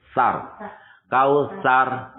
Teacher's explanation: Bukan sa. Sa itu ujung lidah bertemu dengan ujung gigi seri yang atas, makanya ujung lidahnya keluar sedikit.